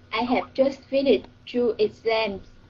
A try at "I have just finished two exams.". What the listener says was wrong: Mm-hmm, very good.